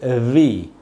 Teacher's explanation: ऊपर के जो दांत हैं उनको नीचे के होठों पे लगाना है, और होठ आपस में टच नहीं होने चाहिए, और तब ये बोलना है ऐसे, वी। होठ मिलेंगे नहीं, आपस में टच नहीं होंगे, ऊपर के दांत नीचे के होठों पे लगेंगे